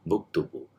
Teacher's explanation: u will be inserted between the verb and the prefix. So buktubu.